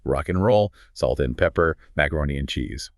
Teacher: The a turns into a schwa and the d usually gets dropped completely because stopping the air flow for a d takes too much work.